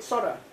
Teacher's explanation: Thậm chí người Mỹ người ta đọc là đọc gần, người Mỹ thậm chí người ta đọc gần bỏ chữ tờ đi